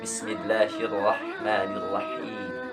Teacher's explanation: huruf H ini mempunyai makhorijul huruf dari tengah tenggorokan. Makanya hati-hati dalam pengucapan huruf H.